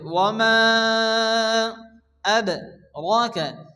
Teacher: মা মাদের পরে দ্বিতীয় শব্দের শুরুতে হামজা আসছে, মধ্যে মুনফাসিল 4 আলিফ টেনে পড়তে হবে।